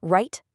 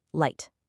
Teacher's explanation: The R rolls way in the back of your mouth, while the L touches the back of your top teeth.